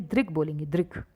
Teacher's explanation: ये जो री से ऋषि होता है ना, इसका उच्चारण ई की तरह होता है, अ की तरह नहीं होता है, ई की तरह होता है, तो ई की तरह होगा तो यानी कि री, इसका री है, द री।